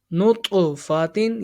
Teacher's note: یہ طا ہے، حروف قلقلہ، اس میں جنبش ہوگی